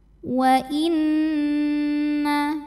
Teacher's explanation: Wa inna, ada hukum gunnah musyaddadah karena nun bertasydid. Cara bacanya didengungkan. Bunyi n-nya tahan kurang lebih 2 harokat. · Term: hukum ghunnah